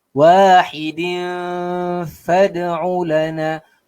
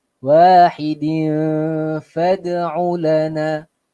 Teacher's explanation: Kemudiannya tanwin bertemu dengan huruf fa. Dengung juga 2 harakat. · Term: ikhfa hakiki